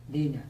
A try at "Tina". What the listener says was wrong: Dina. No. Tina, ale nie Dina, ale Tina.